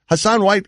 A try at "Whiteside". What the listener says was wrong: Whiteside, yeah. You said White, yeah. It's Whiteside, fine.